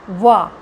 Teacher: दांतों में भी जीभ लग जाती है और होठ भी गोल हो जाता है, वो दंत्योष्ठ हो जाता है, दंत्योष्ठ।